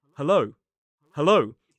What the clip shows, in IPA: həˈləʊ